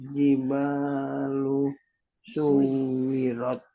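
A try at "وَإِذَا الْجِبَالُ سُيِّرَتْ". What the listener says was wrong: Bukan pakai W. Suwi tapi suyi. Pakai ya ini.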